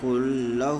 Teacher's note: کل لہ بلا گناہ کے ملا کے پڑھیں گے، اس کو ادغام تام بلا گناہ کہتے ہیں۔